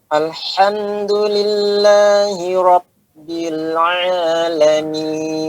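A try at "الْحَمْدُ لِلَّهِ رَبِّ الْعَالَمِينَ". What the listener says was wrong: Pada lam, apakah dia suara mengalir atau tidak mengalir? Atau mengalir sedikit? Nah, tadi Bapak apakah itu dikatakan mengalir? Alirkan sedikit.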